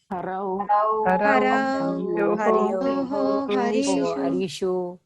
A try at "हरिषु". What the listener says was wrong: हरिषु not हरीषु हे हरे हे हरि हे हरयः